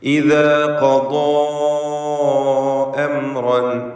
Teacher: ഇദാ എന്നതിലെ അലിഫും ഖദാ എന്നതിലെ അലിഫും തമ്മിലുള്ള വ്യത്യാസം. ആദ്യത്തേത് തർക്കീഖ്, രണ്ടാമത്തേത് തഫ്ഖീം. ഇദായിൽ ദാല് ഇസ്തിഫാലിൻ്റെ അക്ഷരമാണ്, അതിനെയാണ് ദീർഘിപ്പിക്കുന്നത്.